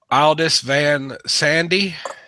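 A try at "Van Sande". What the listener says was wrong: I think that's just a sand. I think that's just sand. I don't believe the E is pronounced in German. Germanic languages, then.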